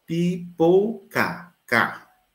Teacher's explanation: ele é exatamente aquela consoante oclusiva velar. Consoante oclusiva velar desvozeada.